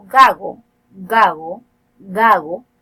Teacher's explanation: no hay un cierre completo los órganos artículos del velo del paladar no llega a ser